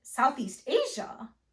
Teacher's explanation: in both cases your intonation is going to rise at the end